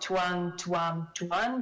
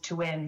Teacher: to one but instead the third singular form is to n so that open central vowel is raised to a mid vowel before this alveolar nasal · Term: vowel raising